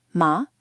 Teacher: The second tone has a rising contour, from mid to high, and is marked with an acute accent, as in ma.